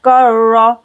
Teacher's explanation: रा को 2 बार पढ़ेंगे, काफ बारीक